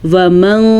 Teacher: کسی حد تک ہم یہاں پہ نون کو چھپائیں گے کیونکہ یہاں پہ اخفا کا قاعدہ ہو رہا ہے